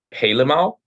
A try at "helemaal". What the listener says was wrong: The emphasis is on maal. De klemtoon. Helemaal.